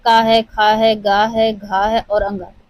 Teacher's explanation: क है, ख है, ग है, घ है और अंग यह हमारे कंठ से उच्चारित होते हैं।